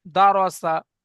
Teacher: দেখেন ভাই, দালের উপরে জাবার, জাবারটি হারাকাত, হারাকাতে পড়া তাড়াতাড়ি পড়তে হবে, টান দেওয়া নিষেধ। রয়ের উপরে জাবার, রকে পুর করে পড়তে হবে অর্থাৎ মুখ গোল করে। সিনের উপরে জাবার, জাবারটি হারাকাত, হারাকাতে পড়া তাড়াতাড়ি পড়তে হবে, টান দেওয়া নিষেধ।